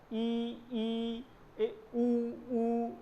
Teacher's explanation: संवृत स्वर मुख कम खुलता है, ई ऊ री, जिसमें आप देखेंगे होंठ बिल्कुल पास हैं, मुख कम खुल रहा है।